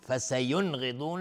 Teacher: فسینغضون، اگر اونجا گفتیم اول مرة ف، تنوین بعدش فا اخفای حقیقی. فسینغضون، نون ساکن برش غین اظهار حلقی. فسینغضون، غین و ضاد هر دو از حروف استعلاء غلیظ تلفظ میشه.